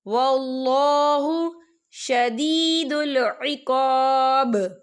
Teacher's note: شدید یہاں پہ یا مدہ ہو رہا ہے، یا ساکن سے پہلے زیر ہے، اور عقاب یا دیکھیں یہاں پہ آیت ختم ہو رہی ہے، وقف کی صورت میں با ساکن ہو جائے گا اور اس پر کلکلا ہوگا